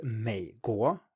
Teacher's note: It's just a low may. It does not go up. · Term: third tone